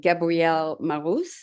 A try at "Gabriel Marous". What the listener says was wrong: Yeah, I like to say Gabriel Marous. Gabrielle tends to be for a female here in America, at least. so just Gabriel Marous.